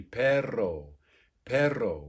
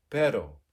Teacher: When it's a double R, that would be perro, perro, where you're doing it kind of quickly, as opposed to a tapped R, which would be pero, meaning but. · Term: trilled R